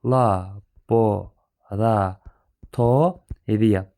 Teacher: Tələffüzündə isə burada birinci O A-ya çevriləcək, O-ya vurğu düşdüyü üçün laboratoriya formasında tələffüz olunacaqdır.